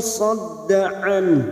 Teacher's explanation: Ciri-cirinya, nun sukun yang bertemu dengan huruf sod, kita samarkan bunyi nun sukun dan kita menyiapkan huruf sod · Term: ikhfa hakiki